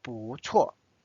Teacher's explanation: the next tone is fourth tone so it's changed from buu to second tone